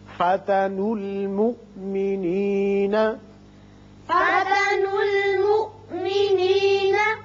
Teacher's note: آپ نون کی پیش کو لام سے ملائیں گے اور یہ حمزہ جھٹکے کے ساتھ پڑھیں گے